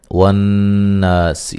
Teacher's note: نون مشدد پہ غنہ ضروری ہے، الف مدہ ہے۔